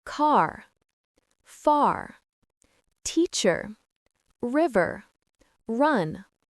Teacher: Instead, the back of your tongue goes up towards the roof of your mouth. The front of your tongue might curl back slightly. It doesn't touch anything. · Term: American R sound